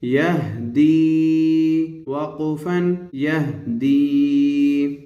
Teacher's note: یا ساکن ہے اور اس سے پہلے والے حرف پر زیر ہے، اس لیے یہ یا مدہ ہوئی اور یا مدہ کو ایک الف کی مقدار کھینچ کر پڑھتے ہیں